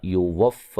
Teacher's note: واو کو فا سے زور سے ملائیں گے، سختی سے، شد ہے، لمبا نہیں کریں گے